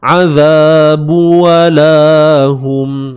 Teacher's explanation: Walahum waw nipis, lam baris atas, dan di sini ada alif mat, dua harakat ma asli. Hum mim mati bertemu ya izhar syafawi, ataupun kita tengok mim tu ada simbol mati di atasnya, maka jelaskan sebutan mim tu.